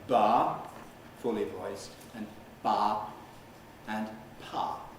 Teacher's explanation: by varying the voice onset time in 3 steps, you can get 3 categories